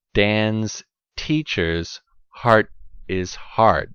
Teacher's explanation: these are actually three different sounds phonetics we call this aspirated d aspirated t and then the unaspirated sound